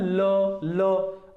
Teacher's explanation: अब जिह्वा जो है ना हमारी, वो तालु से उसको स्पर्श करेगी, ल है ना, उसके पास जाती है, ल इस प्रकार से। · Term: पार्श्विक